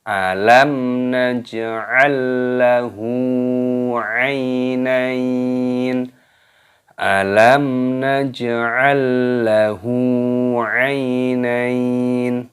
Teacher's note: Mim sukun bertemu dengan huruf nun, ini hukumnya dibaca idhar syafawi. Jadi cara membacanya jelas, jangan didengungkan.